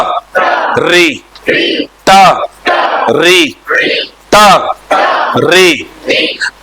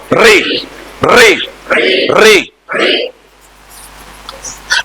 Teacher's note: जैसे ट बोल रहे हो, वहीं से ट बोलते हुए हम लोग पीछे लेके गए हैं जीभ, और झटके से आगे डाल रहे हैं।